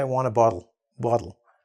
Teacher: Even for us, we say, I want a bottle. And that double T actually becomes almost a D sound